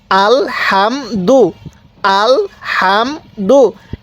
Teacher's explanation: এই হা টা উচ্চারণের সময় মুখ দিয়ে হালকা বাতাস বের করব